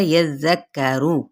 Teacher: या की ज़बर को जाल के साथ नरमी से, जाल की ज़बर को काफ के साथ भी किसी तरह यज़्ज़करू। रॉ की पेश को लंबा नहीं करेंगे